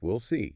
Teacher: It's just functioning as the auxiliary verb. The main stress falls on the verb after it, like we'll see. Your brain parses it as subject plus auxiliary because of the grammar and the lack of stress on the will sound.